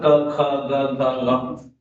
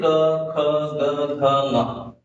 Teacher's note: At the place of velum, the stoppage of air happens. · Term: velar position